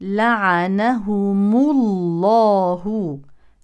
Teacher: سيلتقي ساكنان الميم واللام الساكن الاول ميم جمع اذا تحرك بالضم وبما ان هذه اللام سبقت بضم اذا تفخم